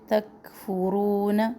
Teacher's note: کاف میں سانس جاری رہتی ہے، سختی بھی نہ ہو اور قلقلہ بھی نہ کرے، ہلائے بھی نہیں کاف کو.